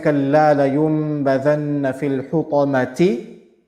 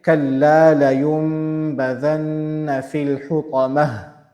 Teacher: And as we said, the ta marbuta, whenever we are stopping on ta marbuta, the ta marbuta changes to ha. The sound of ta marbuta changes to ha.